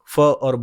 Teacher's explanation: फ और ब बोल के देखो, दोनों होठ आपस में मिलेंगे, इसको ओष्ठ बोलते हैं